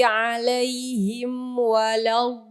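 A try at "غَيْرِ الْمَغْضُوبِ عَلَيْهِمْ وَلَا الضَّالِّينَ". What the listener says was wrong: Sama masih lamnya keseret tebal ya, dotnya masih dal tafkhim, gak apa-apa, terus.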